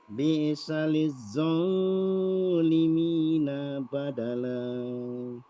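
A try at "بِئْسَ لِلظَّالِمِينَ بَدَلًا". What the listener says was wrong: Sekali lagi nanya pendek. Bi'saliz zalimina, nanya pendek coba.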